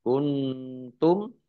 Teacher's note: nun sukun bertemu dengan huruf ta, bacaan ikhfa dibaca samar-samar. Kemudian mim sukun bertemu dengan huruf ta, bacaan izhar syafawi dibaca jelas.